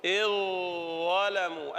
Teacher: أدغم في الضاء، وهو تجانس أيضا